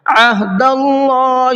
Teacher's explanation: اللہ کے لام کو منہ بھر کے پڑھنا ہے، اس لیے کہ اللہ کے لام سے پہلے زبر ہے